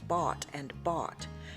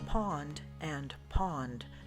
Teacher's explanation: it is defined by the low back merger in which the speakers do not distinguish the sound between the vowels